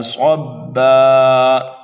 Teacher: یہ با ساکن ہے اور حروف قلقلہ میں سے ہے با، اس لیے یہاں پر قلقلہ صغیرہ کریں گے. حرف صاد جو ہے یہ حروف مستعلیہ میں سے ہے، پر کر کے پڑھیں گے. الف مدہ کے بعد میں حمزہ آ رہا ہے، اس لیے یہاں پر مد ہوگا مد متصل. · الف مدہ کے بعد میں حمزہ آ رہا ہے، اس لیے یہاں پر مد ہوگا مد متصل. صبا پر جب ہم وقف کریں گے تو یہاں پر دو زبر کو ایک الف سے بدل کر کے پڑھنا ہے، تو یہاں پر جو وقف ہوگا وہ وقف بالابدال ہوگا.